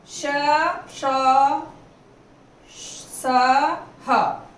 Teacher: श, श, स, ह ये महाप्राण हैं, इनको बोलने में बहुत ज्यादा हवा देनी पड़ती है और हमारे फेफड़े खाली हो जाते हैं।